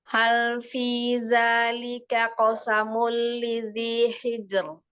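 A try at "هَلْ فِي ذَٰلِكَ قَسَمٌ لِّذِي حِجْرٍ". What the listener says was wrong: Ya, qaf-nya tebalkan lagi. Qasamu.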